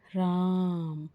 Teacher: उसी तरह से अगर हम किसी व्यक्ति का या किसी को पुकारते हैं या नाम लेते हैं और उसे नाम को लेने में जब हम उस नाम को थोड़ा खींच कर बोलते हैं, जैसे राम, तो र के बाद और म से पहले जो ध्वनि आई वहीं पर ही पलुत स्वर है।